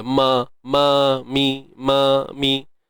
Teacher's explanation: Dia bibir tapi tak perlu muncung pun mim ni. Mim ni melibatkan dua bibir saja.